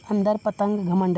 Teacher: इनका उच्चारण केवल नाक से होता है, जैसे अंदर, पतंग, घमंड आदि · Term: अनुस्वार